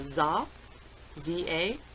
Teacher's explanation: they have no th sound and they have no ER sound so the th changes to a za za and that includes the th ER all just one sound